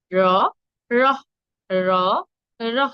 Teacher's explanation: আমাদের জিহ্বাটাকে মূর্ধায় স্পর্শ করে উচ্চারণ করব। র, র, র, র। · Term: মূর্ধা ধ্বনি